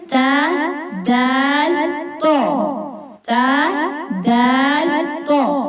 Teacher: آگے آ جاتا ہے حروف نطعیہ 3 ہیں، تا، دال، تو۔ زبان کی نوک جب اوپر والے دانتوں کی جڑ سے لگے تو یہ حروف ادا ہوتا ہے